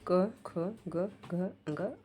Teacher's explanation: जिन व्यंजनों के उच्चारण कंठ से होता है इसके उच्चारण जीभ की पश्च भाग और कोमल तालु को स्पर्श करता है